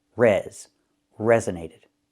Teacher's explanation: The primary stress is on the first syllable.